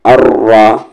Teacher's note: रा को हेवी करेंगे क्योंकि उसकी आवाज़ ऊपर जा रही, जिस रा की आवाज़ ऊपर या सामने हेवी।